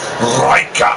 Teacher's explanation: No, you got to pronounce it properly. You got to roll your R.